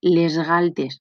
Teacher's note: Eixa S sonora perquè es copia la sonoritat de la consonant que ve després, la G de galtes.